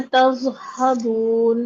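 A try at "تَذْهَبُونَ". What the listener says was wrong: दाल में सीटी नहीं आएगी और दाल की आवाज चलेगी, जबान बाहर निकाल के तज़हबून।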